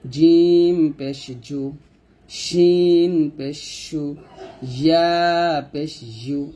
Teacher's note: র জিহ্বার আগার উল্টা পিঠ তার বরাবর উপতলার সঙ্গে লাগবে, র পেশ রো এরকম। জিম শিন ইয়া জিহ্বার মধ্যখান তার বরাবর উপতলার সঙ্গে লাগিয়ে আমরা উচ্চারণ করব